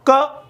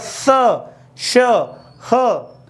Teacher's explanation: इनके उच्चारण में हमारे मुख से अत्यधिक ऊष्मा क्या होती है? बाहर निकलती है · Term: ऊष्म या संघर्षी